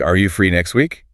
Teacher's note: The T gets abandoned entirely.